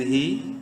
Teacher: ہا کھڑی زیر ہی، ایک الف برابر ہا کو بھی لمبا کریں گے کھڑی زیر کی وجہ سے